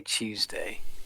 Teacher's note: TU is just pronounced with a ch sound